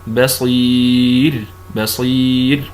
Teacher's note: راء ساكنه وقبلها ياء ساكنه وهذه حاله من حالات الترقيق